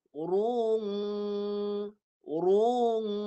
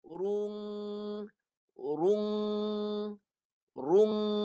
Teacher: Ru. Lepas ru, baru masuk hidung. Baru dengung. Jadi ada dua bunyi.